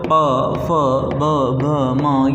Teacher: जब आप उच्चारित करोगे इन व्यंजनों को, तो आपके जो होंठ हैं उनका इसमें यूज होगा, ओष्ठ का यूज होगा।